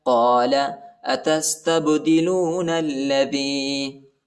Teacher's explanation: قاف کو موٹا پڑھیں گے، بڑا قاف ہے